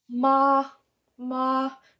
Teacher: straight across like a monotone very even